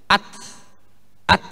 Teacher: Zahirnya hamasnya huruf ta itu ketika disukunkan.